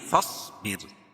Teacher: صاد کو موٹا پڑھیں گے کیونکہ حروف مستعلیہ میں سے جن کا مجموعہ خص ضغط قض ہے، اور را کو باریک پڑھیں گے کیونکہ را ساکنے سے پہلے زیر ہو تو را باریک ہوتی ہے